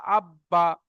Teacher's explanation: হামজার উপরে জবর এসছে, জবরটা হলো হারাকাত, হারাকাতে পড়া তাড়াতাড়ি পড়তে হবে, টান দেওয়া নিষেধ। বায়ের উপরে তাজদিদ একবার ডান দিকের অক্ষরের সাথে মিলিয়ে পড়তে হবে, একবার নিজে নিজে পড়তে হবে। বায়ের উপরে জাবার, জাবারটি হলো হারাকাত, হারাকাতের পড়া তাড়াতাড়ি পড়তে হবে, টান দেওয়া নিষেধ।